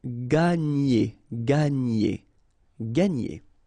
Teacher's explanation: when you've got this G and N, you get the sound ny, okay, and E.